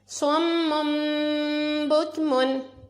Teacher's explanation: حلم بہذا صم بکمن, اس میں سواد کو ہم نے پر پڑا, میم کے ساتھ ملایا, پھر میم کے اوپر 2 پیش میں غنہ کیا میم سے بدل کر, اور بکمن میں کاف کو باریک پڑھنا ہے